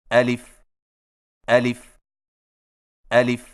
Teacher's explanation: الف کی ادائیگی میں آ کو بغیر کھینچے لی کو فا کے ساتھ فوراً ملائیں